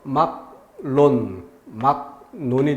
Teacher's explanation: 기역, 비읍 뒤에 연결되는 리을도 니은으로 발음한다. 그래서 막론, 막논이 되고 그리고 그것에 영향을 받아서 다시 기역이 또 변화되죠. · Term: 비음화